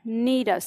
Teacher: विसर्ग लुप्त हो जाता है। और उससे पहले का स्वर यदि लघु है तो दीर्घ हो जाता है।